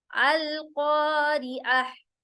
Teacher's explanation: कॉफ के बाद जो अलिफ आ रहा है इसमें अलिफ मद्दा होगा, कॉ लंबा होगा